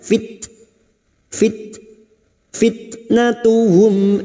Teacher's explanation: sukun yang memiliki sifat syiddah dan hamas, maka bunyinya fit